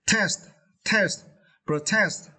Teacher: you need to stress the second syllable